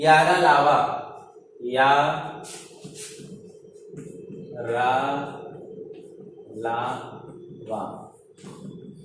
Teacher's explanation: इनका उच्चारण जीभ, तालु, दंत और ओठों के परस्पर सटाने से होता है। स्पर्श करने से नहीं, सटाने से होता है, किंतु ये भी पूर्ण स्पर्श नहीं होता है। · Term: अंतस्थ व्यंजन